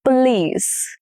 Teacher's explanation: The stress is on the last syllable, which is lease.